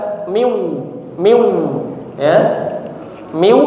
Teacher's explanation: posisi mulutnya sudah di huruf wau cuman masih ada sifat dari huruf nun yang tertinggal atau makhrajnya ya yaitu makhraj dari khaisyum rongga hidung ya. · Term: idgham bighunah